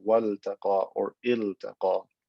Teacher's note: because this is not lam at-ta'rif, it's a lam for a verb, I'm going to pronounce the lam clearly as wal-taqa or il-taqa.